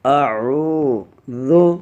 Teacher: عین کے اوپر پیش ہے، اس لیے ایک الف کی مقدار میں کھینچ کر پڑھ رہا ہوں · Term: واو مدہ